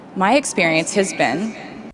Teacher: now she stresses my experience has been because she's talking about this experience my experience versus another experience